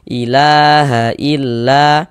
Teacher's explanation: Karena di atas huruf lam ini ada tanda alif kecil nih, atau harokat fathah berdiri, sehingganya huruf la ini kita baca panjang. Nah, mad tabi'i panjang 2 harokat.